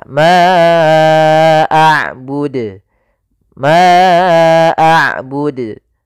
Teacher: Nah, ini tidak mantul dalnya, padahal huruf dal salah satu sifatnya adalah qalqalah, mantul